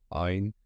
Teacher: Boğazınızın tam ortasını sıkarak çıkardığınız gırtlaktan gelen bir sestir. Harke aldığında a e gibi seslere bürünür. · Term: boğaz sesidir